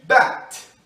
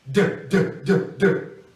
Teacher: mas o som do T é voiceless. As cordas vocais não vibram, como em bat. E o som do D é voiced.